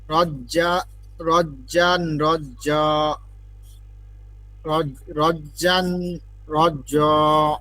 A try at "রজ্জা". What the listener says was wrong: জ হইল কেন, জ হইল কেন, জিম জবর তো যা।